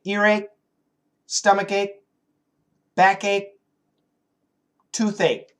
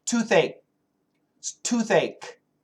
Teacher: Earache, and we can stop the K.